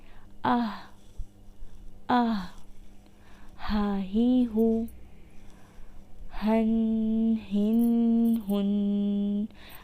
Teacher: ہا سینے کی طرف حلق کے نچلے حصے سے ادا ہوتا ہے